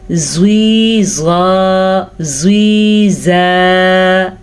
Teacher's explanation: دیکھیں میں نے زواد کو پر پڑھا ہے اور زا کو باریک پڑھا ہے. زوی زا, ٹھیک ہے.